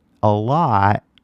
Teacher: I didn't say the T at all, right? So that was actually a glottal stop, and this color right here shows that it's a glottal stop.